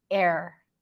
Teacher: when you say it fast, sometimes it just sounds like one long R